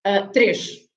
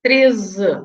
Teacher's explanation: the difference, I would say, to identify it better, is the sh for the 3, três, and the z for the 13.